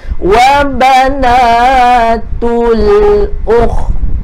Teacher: Dan ta, dia ada bunyi ta. Ketika kita berhenti, mesti kita matikan, ada bunyi hamas, ada bunyi berangin.